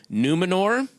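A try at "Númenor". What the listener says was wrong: Well pronounced. you could put a little R on the end. Numenor. one little tap.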